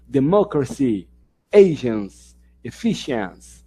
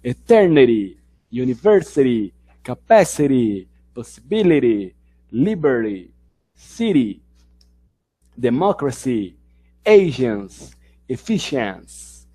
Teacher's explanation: a sílaba forte está lá mais para o começo da palavra, esse stress está mais para o começo da palavra e não para o final